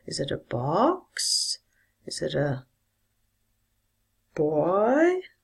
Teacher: these are yes/no questions so you should use a rising tone